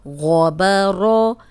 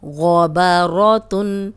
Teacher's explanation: اب دیکھیں غین موٹا ہے، با موٹا نہیں ہے. را پہ زبر را موٹی پڑی جائے گی.